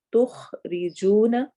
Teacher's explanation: خا موٹے حروف میں سے، حروف حلقی میں سے بھی، روا باریک پڑھا جائے گا